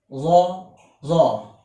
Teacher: it is also the emphatic sound of the letter Z. It is produced by the tongue being set against the palate.